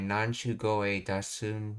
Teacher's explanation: The flow of the speech causes the K of Koi to be voiced into Goe.